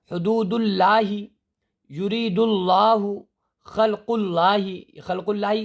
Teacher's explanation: اب یہاں پر یہ جو لفظ اللہ آ رہے ہیں یہاں یہ باریک کر کے پڑھے جائیں گے، زیر والے